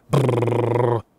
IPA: ʙʙʙ